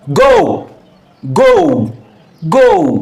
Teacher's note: Diphthong. Two vowels gliding into one another smoothly to produce one syllable, one sound. It still counts as one syllable.